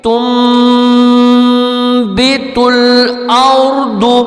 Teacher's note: تو یہاں پر نون ہم نہیں پڑھیں گے، نون کی بجائے ہم میم ادا کریں گے